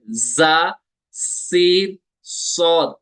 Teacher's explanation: सफीर कहते हैं सीटी को, विसल को। इनमें विसल जैसा साउंड निकलता है, सीटी जैसा साउंड निकलता है, तेज साउंड निकलता है। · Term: सफीरिया